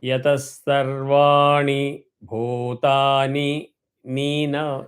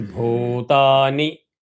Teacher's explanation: Sarvani, because it is hrasvam, it is not dheergam. So you should not allow that to drag.